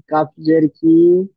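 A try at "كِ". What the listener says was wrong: কি টান হবে না, কি টান দিলে তখন মাদ্দা হয়ে যাবে। শুধু আছে কাপ, জের আছে, ওখানে ইয়া সাকিন নেই।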